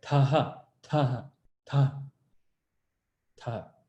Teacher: This is ta, mahaprana, ta. There should be some air coming out. You can put your hand in front of your mouth, say taha, taha, ta, ta.